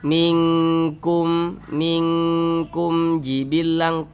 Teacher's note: Kalau ini kan mem sukun setelahnya huruf jim, bukan huruf ba, bukan huruf mem, hukumnya izhar syafawi. Karena dia izhar maka dibaca jelas, tidak berdengung, baca pendek saja. Minkum jibilang jangan dipanjangkan panjangkan gitu, jangan.